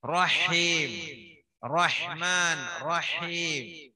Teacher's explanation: ബിസ്മില്ലാഹിർ റഹ്മാൻ, അവിടെ ഹായ് റഹ്മാൻ ആയത്, റഹ്മാൻ ഞാൻ പറയുമ്പോ തന്നെ അല്ലേ, റഹ് ഓതുമ്പോൾ ഹേ പറയുമ്പോ ഒരു വരസൽ കേൾക്കാം